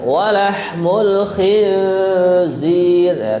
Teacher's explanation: Kemudian di sini yang kita dengungkan walahmul khinzir. Nun mati ketemu za, namanya adalah ikhfa, mendengung ya.